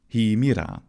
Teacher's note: the aspirate, the H sound, was still completely pronounced in classical Attic, even in the innovative subsystem.